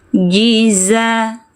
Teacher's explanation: Ji tengah lidah naikkan ke langit-langit ya. Jiza, za bising suaranya.